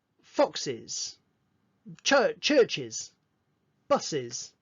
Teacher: hissing sound where air is pushed out of your mouth through your teeth